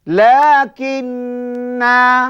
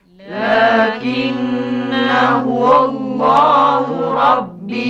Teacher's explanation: Ketika waqaf kena panjang. Kalau baca terus, kena buang alifnya.